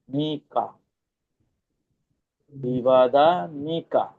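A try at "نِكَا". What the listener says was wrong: মাশাআল্লাহ, মাশাআল্লাহ।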